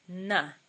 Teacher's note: And finally, the nasal, na. You touch your teeth with the tongue.